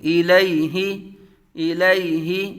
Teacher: حمزہ متحرک، لام متحرک، یا ساکن سے پہلے زبر یا لین، ہا متحرک، تینوں کو بغیر کھینچے بغیر جھٹکا دیے